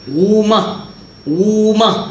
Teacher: Tekan lidah dia dekat atas langit, so dia sebut, getar. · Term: ra